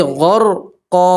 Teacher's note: 2 زبر کی تنوین کے اوپر آپ وقف کریں گے تو 2 زبر کی تنوین کو الف اور زبر سے بدلیں گے